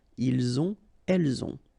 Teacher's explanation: final T not pronounced, and then we make the liaison